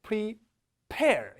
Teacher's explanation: P는 입을 닫았다가 공기가 팍 터져 나가거든요